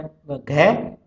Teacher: और व्यंजन में जो है तो वो है घ, उसका कंठ होता है उच्चारण स्थान, इसका स्पृष्ट और संवार नाद घोष महाप्राण